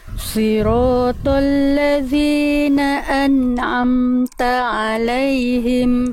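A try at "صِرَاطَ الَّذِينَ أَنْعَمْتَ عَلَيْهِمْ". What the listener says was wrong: Keren. Lanjut.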